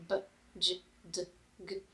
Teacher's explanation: the voiced consonants like b, j, d, g, you can feel a vibration in your throat